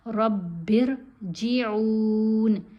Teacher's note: رب ارجعون با کو را سے ملائیں گے تو را باریک پڑھی جائے گی, با کے نیچے زیر ہے. رب ارجعون عین کو لمبا کھینچ کے پڑھیں گے